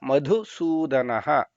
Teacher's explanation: ಮೊದಲನೆಯದು ಮಧು ಅನ್ನೋದರಲ್ಲಿ ಮಹಾಪ್ರಾಣ ಇದೆ ಕೊನೆಯದರಲ್ಲಿ ದ ಇದೆ ಅಂದ್ರೆ ಅಲ್ಪಪ್ರಾಣ